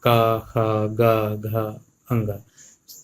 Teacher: हमारी वायु, मुख से निकलने वाली वायु या जीभ जो है वो कंठ से टकराती है